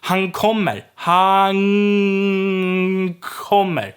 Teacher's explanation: So the N turns into a ng.